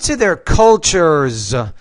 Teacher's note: the S after a voice consonant is going to sound more like a z